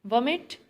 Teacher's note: stress is on first syllable